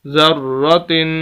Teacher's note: یہاں پر غنہ ہونا چاہیے تھا ذرۃ، لیکن غنہ نہیں کر رہے